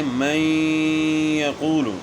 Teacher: نون ساکن کے بعد یا آ گئی تو ادغام ہو گیا، مع الغنہ ہو گیا